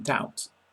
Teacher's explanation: B must not be heard in doubt, Debt and dumb both leave it out,